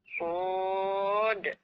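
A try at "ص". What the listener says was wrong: Jangan mucho mulut. Su tak kena. Sod.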